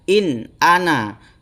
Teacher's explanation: Nah, ini cara membacanya harus dibaca in ana dengan jelas. Tidak boleh dibaca dengung.